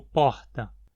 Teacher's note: o R final é debucalizado em alguns sotaques, como na pronúncia de porta, como porta.